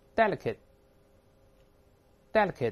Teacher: T▁会失去爆破，舌尖顶住就不喷出来了